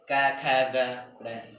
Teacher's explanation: क वर्ण वाले जितने भी बोले जाते वे कंठ से बोले जाते हैं